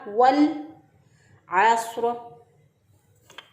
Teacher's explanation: आइन को वस्ते हलक से अदा किया। स्वाद जो है वो चूँकि मोटे हरूफ में से है, हरूफ मुस्तालिया में से है, जब रॉस जो है वो उससे पहले हरूफ मुस्तालिया आ जाए, मोटे हरूफ में से कोई हरफ आ जाए तो रॉ भी मोटी हो जाती है।